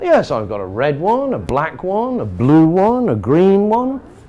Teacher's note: So that rising intonation at the end says, not finished.